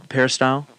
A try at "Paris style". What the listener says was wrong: Are you saying two words? Okay, you both say it like it's one word. Paris style.